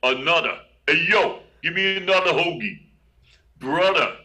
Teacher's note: If TH is in the middle of the word, it still makes a D sound